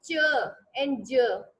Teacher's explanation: Complete closure हो जाता है हवा का, और उसके बाद जो है हवा जो है आफ्टरवर्ड स्लोली रिलीज होती है। तो क्या साउंड्स प्रोड्यूस होती है, च एंड ज। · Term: एफ्रिकेट